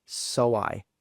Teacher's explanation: And also another thing is I said so I. So it's like there's a W between the so and the I.